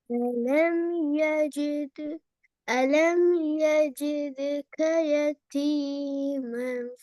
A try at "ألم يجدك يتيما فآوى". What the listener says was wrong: ஃபவ ஃபவ, சரியா? ஏட சவுண்ட் வருது இல்லையே? ஃபவ பிழை, எப்படி வரணும்? فآوى.